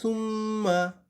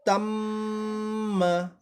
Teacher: ওয়াজিব গুন্না, এটা এক আলিফ পরিমাণ টানতে হয়, এই যে মুঠি খোলা পর্যন্ত।